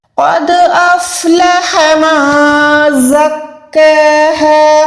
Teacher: قوف موٹا ہے, پراپر یہاں پر منہ کو گولائی کریں گے, دال پہ کلکلا کریں گے